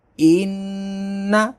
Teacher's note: نون مشدد ہے، اس میں غنہ ہوگا